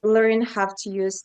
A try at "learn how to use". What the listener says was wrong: Learn have to use. There is just that slight v in there. So, do be careful with that because everything else in your pronunciation is perfect.